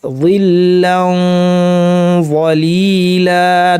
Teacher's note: নুন সাকিন তারপরে য আসলে যেহেতু য ভারী হরফ এই জন্য ইখফাটা ভারী করতে হবে। ইখফা ভারী করতে হলে করণীয় কি?